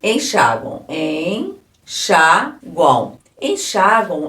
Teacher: Um U também, ó. A gente tem som de U esse M. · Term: tritongo